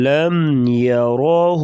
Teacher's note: را کے اوپر زبر ہوگی تو را کو ہمیشہ پر پڑھا جائے گا موٹا